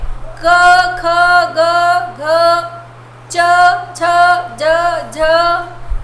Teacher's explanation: अ की ध्वनि सुनाई देती है ना आखिरी में